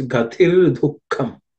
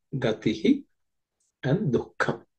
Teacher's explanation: The gatihi, the visarga, gatihi becomes ir because of sandhi.